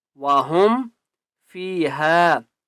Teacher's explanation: فا کو 1 الف کی مقدار کھینچ کر پڑھیں گے